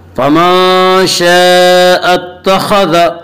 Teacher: खा को पुर पढ़ेंगे। खा हुरूफ़ मुस्तालिया में से है।